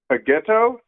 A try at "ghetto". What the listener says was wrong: Yeah, ghetto. There's a T in that word.